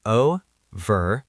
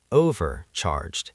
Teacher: Notice how the stress is on the first syllable.